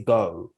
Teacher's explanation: i say go with much more of a sort of closed sound